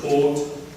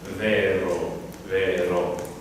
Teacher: In German, in the word tot, it's going to be way more closed than in Italian